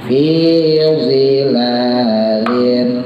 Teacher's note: Fi zilal, lahnya panjang, 2 harokat.